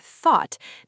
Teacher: When a native English speaker says the word thought, they don't consciously think about pulling their tongue back, raising the back of the tongue, rounding their lips slightly, and producing a soft, low vowel sound